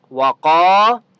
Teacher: قاف مستعلیہ میں سے ہے، اس لیے قاف کو موٹا پڑھیں گے